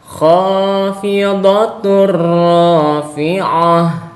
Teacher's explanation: cara membacanya adalah dimasukkan. Kemudian tanpa didengungkan karena ini adalah tanwin berupa dhamah tain bertemu dengan huruf ro maka hukum bacaannya adalah idgham bila ghunah.